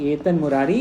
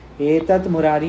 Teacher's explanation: दकार को नकार हो जाता है विकल्प से। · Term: अनुनासिक